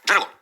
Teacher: тут Дж передається лише одним звуком Дж тому що д ж належить до однієї морфеми відповідно це слово